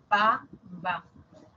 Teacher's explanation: la P y la B, ambos son sonidos oclusivos, bilabiales